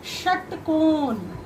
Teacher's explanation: उसके बाद ये है मूर्धन्य स, यानी कि मूर्धा से टच करके मूर्धन्य स बनता है